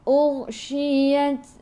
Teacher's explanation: Ta kena ada angin sedikit sahaja, sifat hurufnya hamas. Untuk ta, ingat, sifat huruf ta untuk ta hamas, kena ada angin tapi sedikit sahaja.